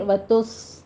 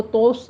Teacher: आगे वतुस, इसको तोस नहीं कहना, ता को तो नहीं बनाना, ता बारीक रखना है, सौत को पुर करना है।